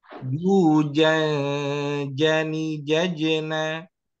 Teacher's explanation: ikhfanya jujan jani ini ada udara dari hidung dan dari mulut